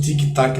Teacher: Tem essa explosão das oclusivas